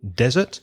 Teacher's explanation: So desert has the stress on the first syllable